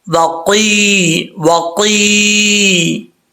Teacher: ٹھیک ہے, یہ سخت تالو کے ساتھ ہی نرم حصہ ہے تالو کا. تو یہاں پہ زبان کی جڑ لگے گی تو قاف پڑھا جائے گا